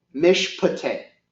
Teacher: the vocal schwa is pronounced, but it's the rushed UH sound